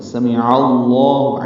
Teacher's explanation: عین وسط حلق سے ادا ہو، لام سے ملائیں اور لام کو پر پڑھیں ، 2 حرکات لمبا بھی کریں، ہا کو جلدی پڑھنا ہے،